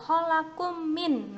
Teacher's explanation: Ini adalah idgham mimi itu adalah apabila ada mim sukun bertemu dengan huruf mim. Nah, bacanya dengung